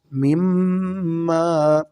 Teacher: میم کے اوپر شاد ہو تو ہمیشہ غنے کے ساتھ پڑھتے ہیں